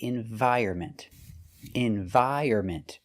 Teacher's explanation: The N is silent.